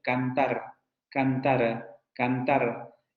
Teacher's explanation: esa última r que aparece en esa palabra o ese último fonema que aparece la palabra cantada es una vibrante simple